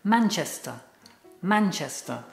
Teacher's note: don't forget, it's got a schwa at the end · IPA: /mæntʃestə/